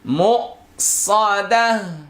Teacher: গোলতা ওয়াকফ করিলে হা হয়ে যায়। এই গোলতার মধ্যে কোনো নিয়মই চলবে না, সব সাকিন হয়ে যাবে, হা সাকিন হবে।